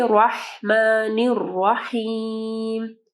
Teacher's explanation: رحمان اور رحیم دونوں کو جو ہے واضح پڑھنا ہے، واو کی آواز نہیں آنی چاہیے